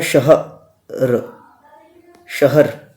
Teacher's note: शह की जो आवाज़ है वो एक साथ आ रही है, र की जो आवाज़ है वो अलग आ रही है, तो दो एक। यानी कि किसी लफ्ज़ को कम समय में पढ़ रहे हैं तो उसका वज़न एक रहेगा, और ज़्यादा समय में पढ़ रहे हैं तो उसका वज़न दो हो जाता है।